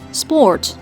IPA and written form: spɔrt (Sport)